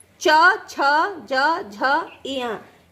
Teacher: यह तालु से बोले जाते हैं।